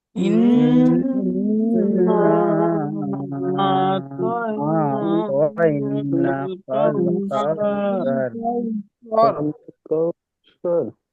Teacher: ইনে নুনের উপরে তাসদিদ এসছে, তো আমরা সবাই এক আলিফ পরিমাণ গুণনা করবে